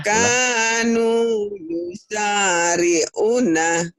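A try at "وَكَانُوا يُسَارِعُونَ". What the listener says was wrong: Belum, U-nya panjang.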